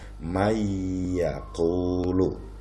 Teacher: maka menjadi mayakulu membacanya ada dengungnya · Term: Idgham Bighunnah